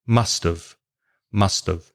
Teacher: In normal speech, you say must have. The have becomes of, and it joins together with the T of must. Must have. Must have. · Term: connected speech